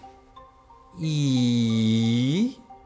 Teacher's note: For instance, if you say E, your jaw is relatively closed. Your tongue is high up in your mouth